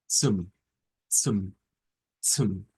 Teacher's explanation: es como una t y una s unidas al mismo tiempo